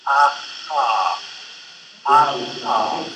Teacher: the velar place of articulation involves a constriction between the velum and the tongue. The result would be ah-ha, ah-ha.